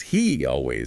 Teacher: a potential slight Y sound linking he and always. He always that little glide can happen naturally between vowel sounds and also how the S in brings might sound like a Z before the vowel in of brings up brings up politics.